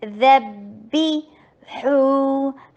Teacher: ہا میں ہمز ہے، ہا میں رخاوا ہے، تو ہا کی پہلی آواز جاری کریں اور پھر ہا کی لفظ کو ادا کریں۔ ہونا نا شارٹ،